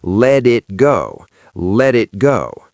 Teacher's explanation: the second T in it usually disappears or becomes a stop T before the G consonant · Don't say let it go. Turn the first T into a D.